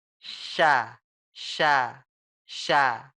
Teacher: ke langit-langit tapi enggak nempel Kalau saya itu enggak nempel tapi bentuknya kayak mau nempel tapi kita bikin jalanan kecil sekali kita bikin Gang sudah plug kita bikin Gang kita tiup Bu